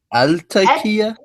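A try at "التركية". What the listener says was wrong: You don't say el-Turkiya. You say et-Turkiya. Et-Turkiya. The reason is because ta is a sun letter. So you don't say el-Turkiya. That's mispronounced. It's et-Turkiya. But it's still an alif lam. So one on both.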